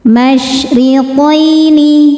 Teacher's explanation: Ro dibaca secara tarqiq karena berharokat kasrah, maka ro-nya tipis.